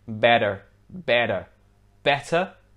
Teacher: in british english this word would be pronounced better better whereas in american english the two t's sound more like a d